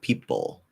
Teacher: It's like people. I'm just going P straight into that half L